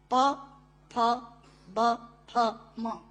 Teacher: दोनों होंठ मिलाकर बोले जा सकते हैं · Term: ओष्ठांग